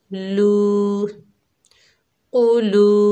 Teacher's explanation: ये वाव मद्दा है, एक अलिफ की मिकदार खींच कर पढ़ेंगे